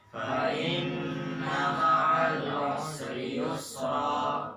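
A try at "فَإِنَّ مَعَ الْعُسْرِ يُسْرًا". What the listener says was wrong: Kesalahan orang Indo, sinnya dikolkolah. Usri. Enggak, salah. Sinnya ingat, rokhawah. Ma'al usri.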